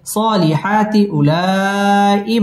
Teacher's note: مد متصل চার আলিফ টেনে পড়তে হবে